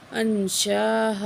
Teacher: بڑی مد ہے، 4 سیکنڈ کھینچ کے پڑھیں گے